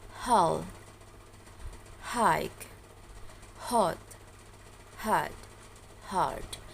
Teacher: English fricative ha Sound H is called the voiceless glottal fricative. It is produced by letting the airstream freely pass the vocal folds to come out of the mouth, but the vocal folds do not vibrate.